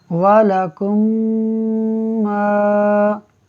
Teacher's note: دیکھیں ناظرین، میم ساکن کے بعد دوسری میم ہے، لہٰذا ادغام شفوی ہوگا، یعنی ہم غنہ کر کے پڑھیں گے میم کو میم سے ملاتے ہوئے۔ تو ایک تو غنہ کی وجہ سے ناک میں آواز کو ایک الف کے برابر کھینچیں گے، پھر آگے الف مدہ ہو رہا ہے، پھر میم کو دوبارہ کھینچیں گے، تو ہم پڑھیں گے وَلَكُمْ مَا، کاف زبر کا، سین با زبر سب، کسب۔